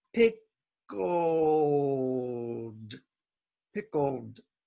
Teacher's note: Don't try to say that L like a Japanese R. It's not. It's more like an O sound.